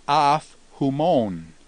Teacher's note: Now, as we look at af humon, we note that if a preposition ends in a vowel and it's followed by a word that begins with a vowel and also has the rough breathing, the final vowel in the preposition drops out and the p actually compensates by going up to a phi. So with the rough breathing and a vowel following a vowel final preposition, the consonant actually compensates for the dropping of the vowel.